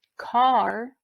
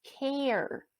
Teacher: you hear how that a and the second word care is a little bit longer